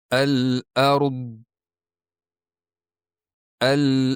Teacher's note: dot tovushida asosan til yon oziq tishlarga bosamiz dedik